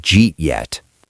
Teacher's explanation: The U turned into a soft Y. Eat lost its vowel length. So, did you eat yet became Jeet yet? · did became a J sound. The U turned into a soft Y. Eat lost its vowel length.